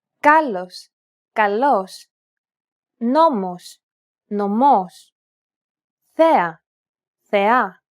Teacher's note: Notice how the accented syllables are emphasized? It's pronounced a little bit louder and longer than the surrounding syllables.